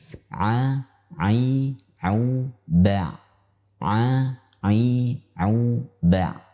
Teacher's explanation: Huruf ain dikeluarkan melalui tengah tenggorokan.